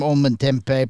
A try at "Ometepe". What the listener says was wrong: Ometepe. Ometepe. Tep. Ometepe. The M is silent.